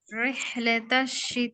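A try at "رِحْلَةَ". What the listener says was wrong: آپ کا ریح ہو رہا ہے، اس کو میری بہن مجہول پڑھے ہیں، زیر کو مجہول آپ پڑھیں، اس کو ٹھیک کریں. ٹھیک ہے، پہلے رازر ری پڑھیں، رازر ری، پھر اب ریح کہیں اس کو.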